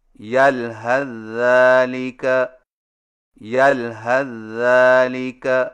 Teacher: number 8، یلحظ ذالک کو ملا کر پڑھنے کی صورت میں سا کو ذال میں داخل کر کے ایک مشدد ذال سے پڑھیں